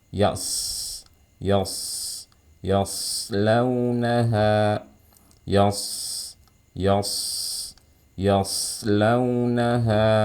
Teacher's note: Bukan huruf dua bibir, tapi huruf lidah. Bibirnya biasa aja.